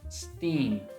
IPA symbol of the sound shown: i: